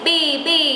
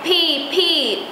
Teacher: B không bật hơi nhưng mà P là bật hơi ok p pi b b khác nhau nha nghe âm thanh